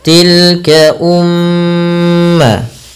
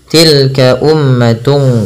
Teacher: terdapat bacaan gunnah, yaitu dengan menahan bunyi suaranya dan memasukkan kerongga hidung. Maka tilka umma tidak hanya sekedar dibaca dengan tilka ummatung gitu ya, tapi ditahan dulu.